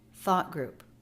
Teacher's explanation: there is a very quick stop for the stop T but the energy of the voice keeps going